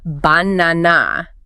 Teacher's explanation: banana, stress on the second syllable. Right, not ba-na-na or ba-na.